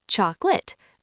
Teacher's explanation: The middle sound just disappears into a tiny schwa or vanishes completely.